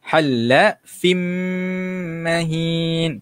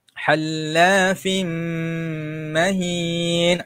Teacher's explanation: Kita masukkan tanwin tersebut ke dalam huruf mim. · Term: idgham bi gunnah